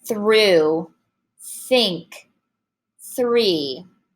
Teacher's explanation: you don't want any buzz of your voice. You just want, think of it like a snake. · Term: voiceless th, voiceless TH